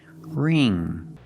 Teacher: the ng makes the nasal sound. There's no g sound.